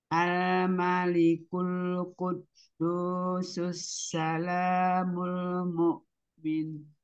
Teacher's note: Jadi lam-lam sukunnya semua ditipiskan.